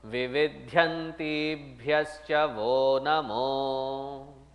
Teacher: And when it is followed by any other consonant, visarga followed by any consonant, then it becomes o.